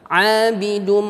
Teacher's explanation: mim gunnah itu ditahan selama 2 harakat